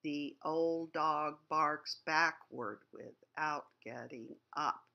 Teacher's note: the first line the longer line has these four accented syllables in a row which is highly unusual for poetry